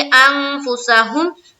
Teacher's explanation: اس کے بعد چلیں گے انفسہم، نون ساکین ہے نا، یہ دیکھیں نون ساکین ہے، نون ساکین کے بعد فا ہے، یہ اخفا میں گیا